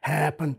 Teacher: we get an example of the gruff phonation or voice quality